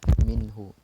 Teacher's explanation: ada nun sukun bertemu ha, minhu. Jadi ini dibaca jelas karena merupakan huruf izhar halki.